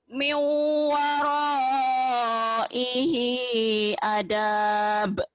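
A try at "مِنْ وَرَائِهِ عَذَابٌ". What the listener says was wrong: jangan adab, azab. Ada rapuh dikit. Ada titiknya. Azab, ada rapuh dikit. Min waraihi azab. Azab, ain, azab.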